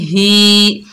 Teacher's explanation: हा के नीचे जेर, खड़ी जेर, एक अलिफ मिकदार खींच कर पढ़ेंगे